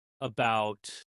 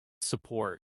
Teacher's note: It often sounds like a relaxed uh you hear it everywhere, especially in unstressed syllables. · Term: little a sound